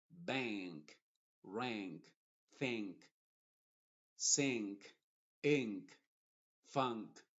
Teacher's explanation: s te das cuenta que la n es nasal O sea no pronuncies Bank Bank ank con una n normal sino Hazlo más nasal y también las cuerdas vocales vibran más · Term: n modificada